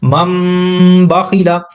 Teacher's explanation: نون ساکن کے بعد با آیا تو یہاں پر اس نون ساکن کی آواز کو میم میں تبدیل کرنا ہے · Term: اقلاب